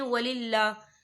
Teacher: یہاں اللہ کا نام باریک پڑھا جائے گا کیونکہ اللہ کے نام سے پہلے زیر ہے